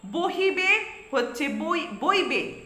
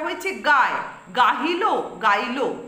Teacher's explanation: সব জায়গাতেই দেখো হ ব্যঞ্জন ধ্বনিটা পরিবর্তিত শব্দে লুপ্ত হচ্ছে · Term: হ লোপ